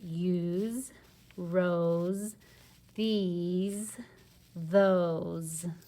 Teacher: And our consonant is that S. And it's sounding like a Z because it's squished between 2 vowels, a vowel sandwich. · All right, that S is sounding like a Z.